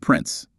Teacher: So instead of a full prince with a sharp T, it's more like prince with a little catch before the S · Your vocal cords just close briefly and then release into the S.